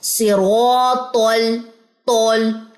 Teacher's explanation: طاء بھی موٹا پڑا گیا کیونکہ ہم نے جو اس کی زبان کا جو درمیان ہے وہ بھی اوپر کی طرف آپ نے تالو کے ساتھ جا کے لپٹنا ہے اور آواز کو مزید موٹا کرنا ہے.